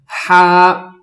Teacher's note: ہا کے لیے ہم نے آواز کے ساتھ تھوڑی سی سانس بھی ملائی تھی